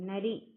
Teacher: நாவின் நுனி மேல்வாய் பல்லின் அடிப்பகுதியை தொடுவதால் நகரம் பிறக்கிறது.